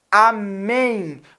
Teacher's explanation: amém você percebe que esse m é um Amém em Amém você tem claramente um ditongo você tem um ditongo nasal em Amém